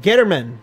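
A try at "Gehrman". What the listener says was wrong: There's no T in here. Germain. German. I thought you said Getterman.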